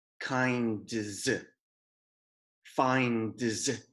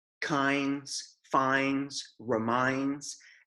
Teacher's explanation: Making a D sound and then making a Z sound afterwards is very difficult to produce smoothly